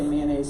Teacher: the Northeast is where they say mayonnaise two syllables